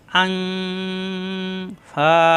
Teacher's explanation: এই নুন সাকিনের পরে আসছে ফা অনের স্বরের মত গুন্না হবে ইকফা গুন্না